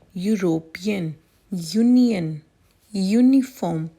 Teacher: All these words begin with YU phonic sound, which is a consonant sound.